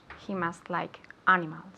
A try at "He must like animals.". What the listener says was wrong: Very good, okay?